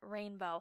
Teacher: So rainbow was one that has the long vowel sounds. It has the long A and the long O sound in it, rainbow.